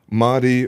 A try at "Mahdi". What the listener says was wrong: It's actually pronounced Mahdi. Mahdi. No khe. It's a soft H, actually. Mahdi.